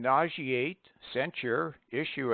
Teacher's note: In nauseate, censure, issue, etc., the S must be pronounced as SH.